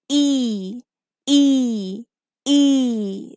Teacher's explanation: have long e long e is a pure V sound because when we say e our mouth doesn't move it's just remain in a single position